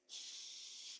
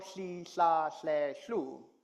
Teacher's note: So that's where you put the tip of the tongue. But instead of blowing the air over the center of the tongue, you're going to release the air on the sides of the tongue.